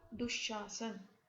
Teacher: दु जमा शासन, इसमें ये जो श है, श होने के कारण से चूंकि ये तालव्य श है, तो इस कारण ये जो विसर्ग है ये भी तालव्य श में परिवर्तित हो गया और शब्द बना दुशासन।